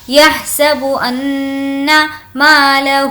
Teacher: اب نون پر تشدید ہے غنہ ہوگا۔ یحسب ان مالہ، ہو پر ہم کھینچ کر پڑھیں گے کیونکہ یہاں پر مد ہے۔